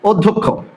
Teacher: এই অধ্যক্ষ শব্দের যে অ, এটি কিন্তু ও হয়ে যাবে, কারণ অ এর পরেই একটি জফলা আছে। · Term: সংবৃত